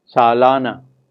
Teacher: the la syllable is stressed and we find that it is longer in duration than the first syllable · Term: stressed vowel